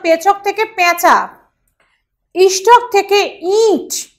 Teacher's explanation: নাসিক মন্ডলের প্রাধান্য দেখা যায় অর্থাৎ নাক দিয়ে উচ্চারণ করা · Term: নাসিক মণ্ডলের প্রাধান্য